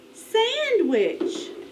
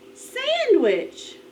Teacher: the accent is on the first syllable